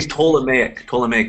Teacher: the P is silent